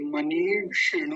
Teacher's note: मनीषिणु, मनीषिणु, नकार पर दीर्घ ईकार और मूर्धन्य शकार पर ह्रस्व ईकार, तो दोनों का ध्यान रखेंगे। पहली मात्रा लंबी खींची जाएगी, दूसरी मात्रा जल्दी बोली जाएगी।